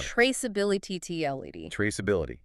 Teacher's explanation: And where does the stress go? It hits that middle syllable.